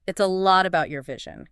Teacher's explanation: the emphasis in it's a lot about your vision. Seems to fall on lot and vision.